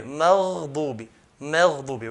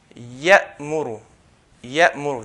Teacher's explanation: And if you notice between ghain and the next letter, there's no gap. So, maghdubi, straight away, maghdubi, maghdubi.